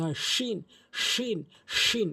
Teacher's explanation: শিনটি হচ্ছে জিহ্বার মাঝখান উপরে তালুর সঙ্গে লাগিয়ে উচ্চারণ করতে হয়